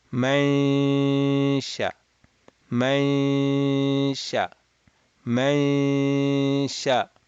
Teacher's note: You're nasalizing. Your nasal cavity is going to open up, or it's going to open, while your tongue is at the sheen makhraj.